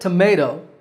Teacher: the second syllable is the one that's stressed